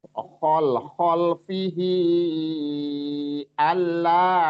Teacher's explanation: Kalau di depannya bertemu dengan hamzah dia jadi matsilah thawilah. Panjangnya tadi empat sampai lima harakat. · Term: mad silah thawilah